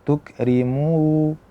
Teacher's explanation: Pertama dia khayshum, gunnah. Kemudian ketika kita panjangkan dengan waw, dia beralih menjadi huruf yang keluar dari jauf.